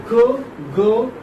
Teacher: Back of the tongue plus soft palate. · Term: velar